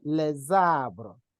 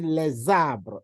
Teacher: Arbre begins with a vowel, the article ends in S, right? So make sure that you do what we call liaison. You join them, you link the two to read as one word.